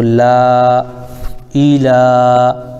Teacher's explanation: لام پر کھڑا زبر ہے، اور کھڑا زبر الف مدہ کے برابر ہوتا ہے